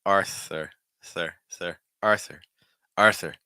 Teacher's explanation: Notice too in American English that the last R will be present.